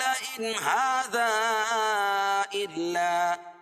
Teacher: یہ 6 حروف نون ساکن یا تنوین کے بعد جہاں بھی آئیں گے تو وہاں اظہار ہوگا. ہا کھڑا زبر قائم مقام، الف مدہ کے اس کو ایک الف کے برابر کھینچ کے پڑھیں گے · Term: مد منفصل